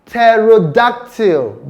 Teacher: The p sound there is not pronounced. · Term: silent p